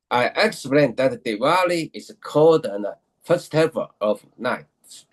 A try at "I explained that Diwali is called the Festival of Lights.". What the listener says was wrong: It was good, but I didn't hear the word the. the articles, you don't say it pronounced in a pronounced fashion. Let's make sure a and the, they are all important. They're all important, right?